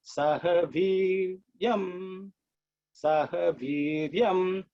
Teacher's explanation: I is a longer E, but with the accent at the bottom. That means you have to again bring it down.